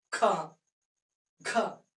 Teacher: और हमने ये कहा था कि हा की ध्वनि यानी हाकार की ध्वनि इन वर्णों के उच्चारण में विशेष रूप से सुनाई देती है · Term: महाप्राण